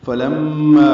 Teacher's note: میم مشدد پہ غنہ ہے، ما الف مدہ ہے.